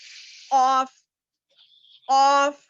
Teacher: جو چھوٹی زبان بولتے وہاں کا جو نرم حصہ ہے، نرم تالو سے لگے تو وہ زبان کا وہ نرم حصہ اوپر وہ زبان کو، چھوٹی زبان کو لگانے سے ادا ہوتا ہے.